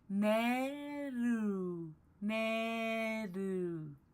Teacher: It's like you're sliding your tongue against a hard palate. It's a combination of an L and an R. So like you start off with the L sound.